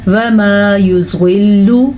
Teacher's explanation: ضاد کو پر پڑھنا ہے, لام کو لمبا نہیں کرنا